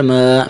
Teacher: کھڑی زبر کو ایک الف کے برابر کھینچیں گے